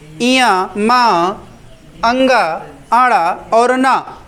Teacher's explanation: ये 5 वर्ण आए हैं, इया, मा, अंगा, आड़ा और न। ये पांचों वर्ण, इन्हें अनुनासिक भी कहा जाता है। इनका उच्चारण नासिका से होता है।